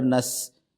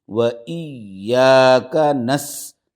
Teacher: و ایا، کاف زبر کا، و ایاک، نون سین زبر نس، یہ سین کی جو آواز ہے اس میں تھوڑی سی باریک آواز رہے گی، اس کی تھوڑی سی ایسی سیٹی کی جیسی آواز اس کی نکلیں گی